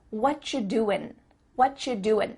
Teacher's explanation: becomes cha whatcha doing you might notice too extra tip that the end of the word doing that g also gets cut out